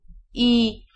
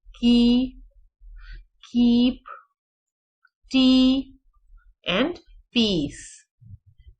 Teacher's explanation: ये वो साउंड है जो थोड़ा सा मुंह खोल के बोली जाती है और front of the tip up होता है, फ्रंट ऑफ द टंग थोड़ा सा रेज्ड पोजीशन में होता है